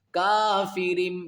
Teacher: یہاں 2 زیر کی تنوین کے بعد با جب آئے گی تو اقلاب ہوگا۔ یہاں با اس را کا جوڑ اس میم کے ساتھ کرے، یہ جو چھوٹی سی میم ہے نا اس کے ساتھ ہوگا۔